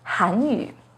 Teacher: The pinyin and tone for Hanyu has a 2nd rising tone on Han